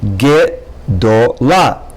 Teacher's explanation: So the shva in had is silent, but the shva in the first syllable le is longer.